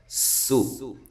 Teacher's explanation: سین باریک ہے، باریک سیڑھی کی آواز، لیکن سین کو لمبا نہیں کرنا